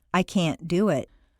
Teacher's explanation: make the negative can sound very short and stress both can't and the verb